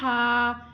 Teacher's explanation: ہا کو 1 الف 2 حرکات کے مقدار کے برابر کھینچ کے بھی ادا کرنا ہے